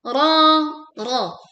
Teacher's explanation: dibaca dengan tebal , ya, panjangnya dua harakat. Biyu ditekan karena ya tasydid.